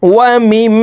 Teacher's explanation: এই মিম তাসদিদওয়ালা মিমের সাথে নাকের বাসি থেকে 3 সেকেন্ড পরিমাণ গুন্নাহ করে ধরে রাখবো। এই গুন্নাহকে ওয়াজিব গুন্নাহ বলা হয়, কারণ হরকতের বামে নুনে মিমে তাসদিদ হইলে সর্ব অবস্থায় নাকের বাসি থেকে গুন্নাহ করিয়া পড়িতে হয়।